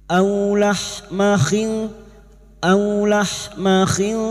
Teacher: au fathah bertemu wau sukun kita lunakkan huruf Lin